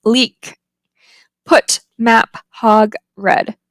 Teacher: there's no audible release at the end of those words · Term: unreleased stops